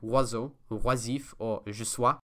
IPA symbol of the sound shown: wa